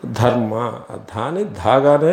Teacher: కాబట్టి సంస్కృత భాషలో ఉచ్చరించే పక్షంలో ధర్మ ధాని ధాగానే మహాప్రాణవర్ణంగానే ఉచ్చరించాలి